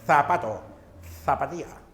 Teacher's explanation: La lengua, el ápice que es la punta de la lengua, va entre los dientes, pero sin morder. No se une, no lo muerde, sino se aproxima. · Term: Interdental